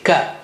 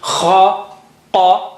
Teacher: Ka is not high sounding, it's normal sounding, ka. Whereas kha and qa are both high sounding.